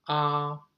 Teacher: there is a bar on top of the ah and that indicates the first tone or the flat tone or the high tone basically okay it is a kind of a level so it's